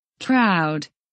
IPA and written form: kraʊd (Crowd)